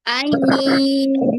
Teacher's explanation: Itu masuk bukan ai. Masih ada nunnya. Nunnya jangan dilewati. Nunnya masukin ke hidung.